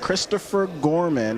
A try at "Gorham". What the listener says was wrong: Gorham. There's no N in it, but you want to say it.